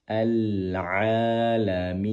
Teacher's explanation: Pastikan ain keluar dari tenggorokan bagian tengah